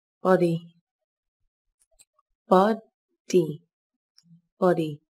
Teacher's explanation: từ này có hai âm tiết, trọng âm rơi vào âm tiết đầu tiên các bạn nhé. Từ này đồng thời cũng có chứa âm o ngắn.